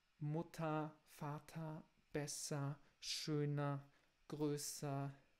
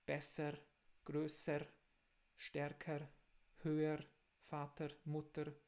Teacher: com uma A, assim, com uma A. Uma A vocálica no final das palavras